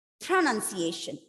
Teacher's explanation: I'm stressing on the first syllable.